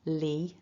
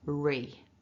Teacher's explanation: clear what you want to make sure you're doing is that your tongue is just beginning up behind the top teeth and then kind of flicking forward a little bit